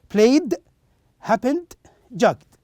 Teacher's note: The opposite of the previous rule we said a while ago. If the root verb ends with voiced sound, in this case we pronounce the ed as da sound.